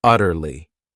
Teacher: word has 3 syllables, and the stress is on that first syllable